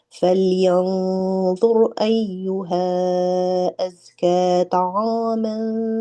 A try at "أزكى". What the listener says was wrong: أزكى where's the deepness?